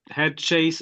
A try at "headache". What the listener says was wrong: you're pronouncing it like it's written, and unfortunately, it's never pronounced how it's written in English. often, it's a strange pronunciation. And yeah, it's headache. It's just ache.